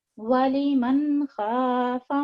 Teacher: اس پہ ظاہر کر کے نون کی آواز میں پڑھیں گے، چونکہ اس کے بعد حروف حلقی میں سے ایک حرف ہے خا